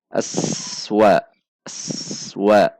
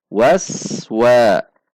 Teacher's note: Antara bunyi as dengan wa tidak ada jeda.